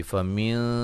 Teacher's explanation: نون ساکن کا باریک اخفا ہے ، میم ساکن کا یہاں اظہار ہے، کا الف مدہ ہے،